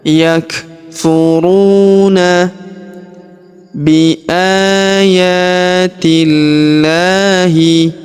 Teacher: Huruf a kita panjangkan dua harakat karena terdapat alif kecil di atasnya.